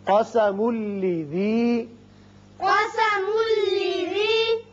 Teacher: میم کو جب لام سے ملائیں گے، تنوین کے بعد لام ہے، ادغام بغیر غنہ ہوگا